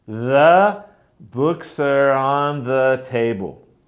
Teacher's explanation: the stressed words are books and table.